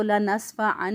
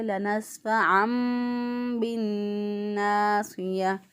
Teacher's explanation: اب دیکھیں تنوین کے بعد با آ گیا، نون ساکن یا نون تنوین کے بعد جب با آ جائے تو اس کو اقلاب کہتے ہیں، کہ نون کی آواز کو میم سے بدل کے پڑھنا ہوا ہوتا ہے، اس پہ چھوٹا سا میم لکھا ہوا ہوتا ہے۔